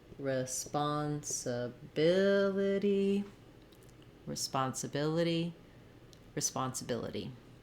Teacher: So I don't want to go too slow or too even across the syllables. I still want to be longer on bill and shorter on my other syllables.